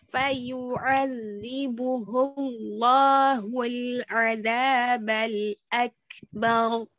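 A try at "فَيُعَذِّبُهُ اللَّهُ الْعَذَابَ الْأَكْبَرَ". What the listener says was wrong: Tipiskan ba-nya. Akbar. Bar. Jangan bar. Bar.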